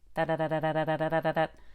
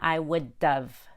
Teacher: Notice the D in would is a fast D. You don't need to have a lot of tongue pressure to make that D. It's super light, a fluttering tongue.